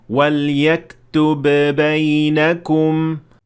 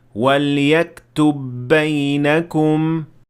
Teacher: غلط یہ ہوگا اگر آپ کہیں وَلْيَكْتُبْ بَيْنَكُمْ، جبکہ درست ہے وَلْيَكْتُبْ بَيْنَكُمْ، یعنی یکتب کے آخر والی با اور بینکم کے شروع والی با آپس میں مدغم ہو کر ایک ہی با بن جائیں گی، جس پر قلقلہ نہیں ہوگا